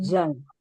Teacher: Pada huruf zai, maka pita suara dalam kondisi tertutup rapat.